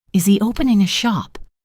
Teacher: Notice how the speaker's voice goes up at the end of a yes no question. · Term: intonation